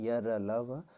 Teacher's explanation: दरअसल अंतःस्थ व्यंजन 4 हैं, य, र, ल, व। इनका उच्चारण जीभ, तालु, दांत और ओठों के परस्पर सटाने से होता है, किंतु कहीं भी पूर्ण स्पर्श नहीं होता। अतः चारों अंतःस्थ अर्धस्वर भी कहलाते हैं।